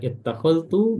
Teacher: setiap lafaz ittakhadtu, ya, ittakhadtu, maka zal diidghamkan ke ta secara sempurna, ya, idgham kamil, ya, masuknya secara sempurna, ya.